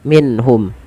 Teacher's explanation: syafawi yaitu adanya nun sukun bertemu dengan ha cara membacanya itu diperjelas suara nunnya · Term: izhar